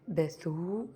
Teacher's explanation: Donc le b avec la fetha, le tha avec la damma et le grand waw. Donc c'est la voyelle longue. Donc, besou, on reste un peu plus longtemps.